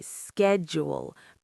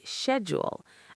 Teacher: The sh says a sh sound in British English